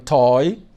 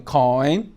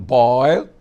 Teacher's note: The last of the closing diphthongs that end in E is the oi, like you have in toy, like you have in coin, like you have in boil, and like you have in joy.